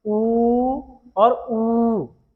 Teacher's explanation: ऊ और ऊ को बोलने के लिए हमारे जो होंठ हैं वो वृत्त के समान बनते हैं